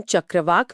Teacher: चक्रवाक में क ध्वनि गले से बहुत कोमलता से निकलती है।